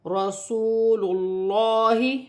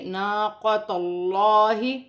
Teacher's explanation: اللہ کی لام موٹی پڑھی جائے گی کیونکہ اللہ کی لام سے پہلے پیش آ رہی ہے